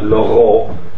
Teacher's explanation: the reason that the ayin is preserved seems to be because the word also underwent what's known as pharyngealization. This is what this little dot on the L is supposed to represent.